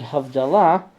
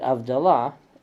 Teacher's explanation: In the case of the word Havdalah, the Yanina Jews pronounced it Avdalah because they didn't have the H.